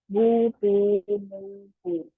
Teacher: तो यहाँ पर वाव साकिन, साकिन जज्म वाली वाव होती है, तो वाव साकिन से पहले बा के ऊपर पेश है, तो इसको हम दो हरकत तक खींच के लंबा करके पढ़ेंगे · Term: वाव मद्दा